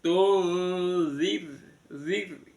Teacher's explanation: Kemudian yang tung itu ada nun sukun bertemu dengan zal, diikhfakan, disamarkan bunyi nunnya di tengah-tengah antara nun sama zal. Tunzir, zirnya ro sukun, sebelumnya ada zal di kasroh, itu roknya dibaca tipis sambil drenges ya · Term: ro tarkik